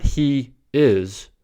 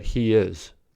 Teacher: if the first vowel sound is not round like e the inserted sound is y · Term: intrusion